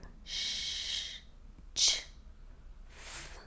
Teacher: Those sounds do not produce any vibration in your vocal cords.